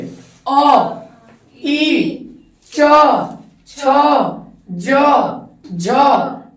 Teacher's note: बोलते वक्त हमारी जिह्वा ताल से स्पर्श हो रही है, यानी ये तालम पे है